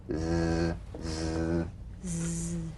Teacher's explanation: The Z, cognate S, a voiced S sound fricative. The tongue rim should gently touch the upper gum ridge.